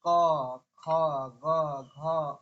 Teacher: कंठ से उच्चारण हो रहा